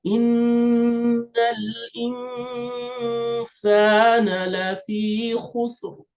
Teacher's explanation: Innal in, so there's a noon here, is a noon, it's called noon sakin, meaning a silent noon like the one we have here. And so this noon sakin is not going to be pronounced, but it's having a gunna sound. That's, and you do that for two counts.